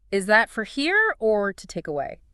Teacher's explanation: notice how to take away links together